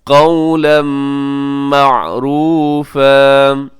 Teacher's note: تنوین کے بعد دیکھیے گا میم ہے حرف یرملون میں، ادغام کیجیے گا غننے کے ساتھ